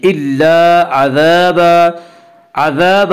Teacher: الف مدہ کو ایک الف کے برابر کھینچ کر پڑھیں گے